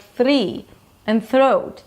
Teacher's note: they get this weird middle sound like a trilled R in the middle